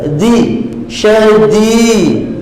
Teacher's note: Zilzalan syadida. Harful dal, hujung lidah sentuh hujung gigi antara gusi dan gigi atas. Di syadi, gitu.